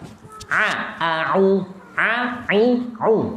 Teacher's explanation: Dan A itu adalah di bagian ujung dari tenggorokan, yang paling luar.